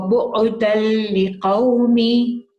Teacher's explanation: after the dal tanween, you've got a lam, so it's full merging, so it's full idgham.